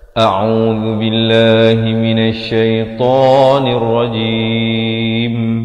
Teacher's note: Lafz jalalah dibaca nipis kerana datang sebelumnya baris kasrah.